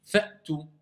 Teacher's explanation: Ça doit être sec. Il n'y a pas de hams qui sort, il n'y a pas de son qui sort, il n'y a pas de résonance qui sort, il n'y a pas de fatha. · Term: la hamza